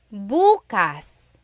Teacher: If you say bukas, bukas, emphasis is on the first syllable, that means tomorrow.